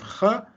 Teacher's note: the velar fricative the voiceless velar fricative